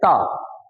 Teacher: इस वाले में क्या है, इसको बोलते हैं दंत। दंत का मतलब अब हवा की टक्कर देनी पड़ेगी कहां, दांत में। और दांत में देने का तरीका क्या है, ता।